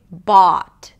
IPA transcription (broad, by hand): ɔː